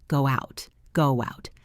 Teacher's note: A native speaker adds a W sound. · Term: vowelto vowel linking